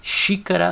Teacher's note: basta olhar a sílaba que tem o acento viram aqui xícara a sílaba tônica é o xi